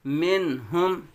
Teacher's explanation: میم متحرک نون ساکن کے بعد حروف حلقے میں سے ہا آیا ہے، تو اب یہاں بھی اظہار ہوگا. من ہم حمزہ نون زبر ان عین میم زبر عم ان عم.